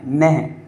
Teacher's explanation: यह नहा नहीं बोलना है, नह, हा का उच्चारण आए और आराम से आए। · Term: विसर्ग